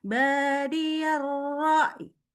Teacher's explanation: itu cara kalau berhenti pada huruf ya yang dia sukun, huruf sebelumnya pun sukun. Jadi dia tetap muncul bunyinya seperti y atau i gitu ya.